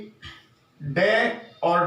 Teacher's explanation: डे और ढे जब हम इनका उच्चारण करते हैं तो हमारी जो जीभ की नोक है वो झटके से नीचे गिरती है, तो इनको हम उत्क्षिप्त व्यंजन के नाम से भी जानते हैं, और इनको अतिरिक्त व्यंजन के नाम से भी जाना जाता है।